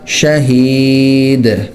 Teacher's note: دال پہ قلقلہ ہوگا